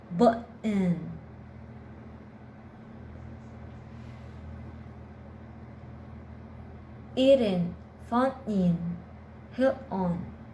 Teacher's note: It's easier to stop the air in your throat and quickly direct it through your nose for the N. · the T sounds becomes a glottal T before a weak syllable ending with n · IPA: ʔ